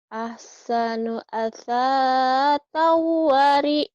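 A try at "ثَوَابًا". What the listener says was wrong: Bukan asatau. Dia bukan asatau. Kan titiknya satu Asasau. Ahsanu asasawari.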